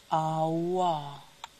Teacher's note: Voiced labial velar approximant.